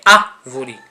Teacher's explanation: E temos também aí no caso as palavras proparoxítonas, que são posicionadas no período antepenúltimo, que é o exemplo da palavra árvore. A palavra árvore contém a sílaba forte no início da palavra. A primeira sílaba é a sílaba forte, né, que é árvore, né?